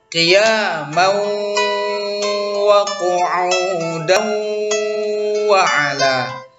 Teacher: Hukum bacaan idgham bi gunnah pada kata atau lafaz qiyamau wa qu'udan wa ala. Jadi tanwin atau baris dua bertemu huruf waw yang ada di depannya ya, maka itu hukum bacaannya adalah idgham bi gunnah. Jadi pakai dengung.